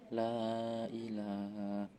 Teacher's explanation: mat jaiz munfasil sebab mat tabi'i bertemu hamzah dalam lain kata panjangnya antara 2-5 harokat